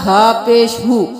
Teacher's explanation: اب ہا پیش ہو بھاری آواز میں ادا ہوگا کیونکہ سینے کی طرف سے نکلے گا.